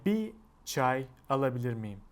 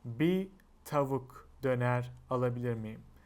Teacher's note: And if you want to say bir when you're ordering something, we will use bi instead of bir